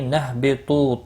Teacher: طا حروف مستعلیہ پر پڑھا جائے گا، تو واو مدہ ہے، ایک الف کے برابر کھینچ کر پڑھیں گے۔